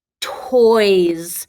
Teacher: what is that s sounding like in toys sounds like a z